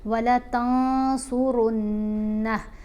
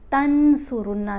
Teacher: نون کی آواز کو ناک میں چھپا کر پڑھیں گے اور ایک الف کی مقدار جتنا ٹھہر کر پڑھیں گے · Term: اخفا